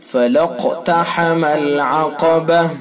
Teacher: فَلَقْتَحَمَ الْعَقَبَةَ، قاف کے اندر قلقلہ ہوگا، ٹھیک ہے، قلقلہ ہوگا قاف کے اندر، اور قاف کے اندر قاف کو پر بھی پڑھیں گے، پر یعنی موٹا کر کے بھی اس کو پڑھا جائے گا